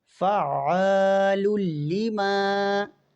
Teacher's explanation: الف سے پہلے والے حرف پر اگر زبر ہو تو اسے ہم الف مدہ کہتے ہیں، اور الف مدہ کو ہم ایک الف کے برابر کھینچ کر پڑھتے ہیں